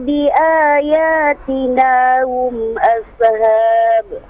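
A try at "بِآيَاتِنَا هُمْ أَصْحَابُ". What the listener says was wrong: Jangan ashab. Sama kayak tadi, jangan ashab. Se-nya dihilangkan. Langsung.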